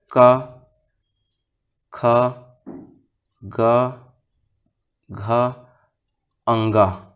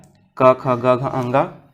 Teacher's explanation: क वर्ग का उच्चारण स्थान क्या है? कंठ है।